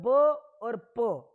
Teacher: ब और प में दोनों होठों को जोड़ दिया जाएगा तो हवा है वो वहीं अंदर बंद रह जाती है। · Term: स्पर्श व्यंजन